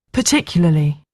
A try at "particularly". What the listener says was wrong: I can hear your voice sort of stopping here, and then your voice drops off a little bit for the Lee. And I think you're saying sort of particular and then Lee.